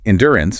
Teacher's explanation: endurance places the heavy stress on the second syllable